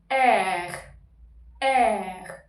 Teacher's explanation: French R comes from throat.